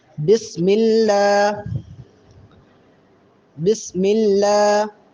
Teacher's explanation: اللہ کے لام کے اوپر کھڑا زبر ہے تو اس کو لمبا کریں گے